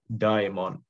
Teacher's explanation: with the shortened final vowel and compensatory lengthening of the preceding diphthong. Again, because the accent here is on the first syllable.